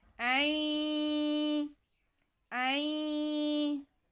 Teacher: نون ساکن کے بعد یا آ جائے تو نون کی آواز کو ہم یا میں ملا کے پڑھیں گے، ادغام بالغنہ، تو یہاں پہ بھی ہم حمزہ کے بعد نون کی آواز کو یا میں ملا لیں گے۔